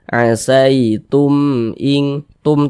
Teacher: huruf b bukan huruf mim maka semua hukumnya namanya izhar syafawi karena dia izhar maka dibaca jelas dia tak berdengung dia asitum in Tum tumnya tuh jangan didengungkan jangan